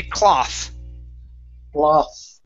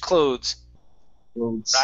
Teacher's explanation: a cloth like this the the th is unvoiced okay um with clothes okay this is the th is voiced